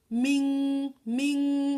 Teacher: here we are hearing the sound of nun sakin because there's no idgham letter after the nun sakin here.